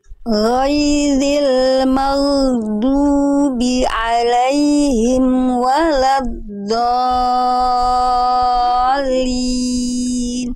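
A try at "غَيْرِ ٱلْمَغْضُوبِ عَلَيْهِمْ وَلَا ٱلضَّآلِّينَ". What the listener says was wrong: Ditekan lagi sedikit di lamnya ditasdidkan.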